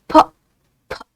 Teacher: By putting your hand in front of the mouth, try speaking p, and then try speaking p, right? Whenever you say p, it is the puff of air that you will feel in front of your hand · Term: aspirated